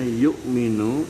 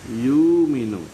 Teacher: Misalnya yu'minu itu dibaca yuminu, itu berarti menggantikan hamzah yu dengan huruf mad yaitu wawu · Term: ibdal